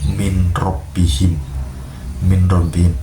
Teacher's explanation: Pada kata tersebut terdapat nun mati bertemu dengan ro. Ketika nun mati itu tidak lagi didengarkan secara jelas. Nun ini melebur menjadi huruf ro.